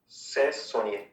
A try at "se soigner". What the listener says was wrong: से नहीं, स अ है, अ का साउंड अ है, ए नहीं है. se soigner.